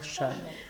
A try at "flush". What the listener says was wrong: No, one syllable. Flush.